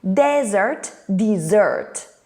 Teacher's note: The vowel sound is also different, E, I, and the stress, first syllable and second syllable.